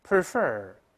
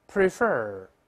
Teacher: 重音在第二个音节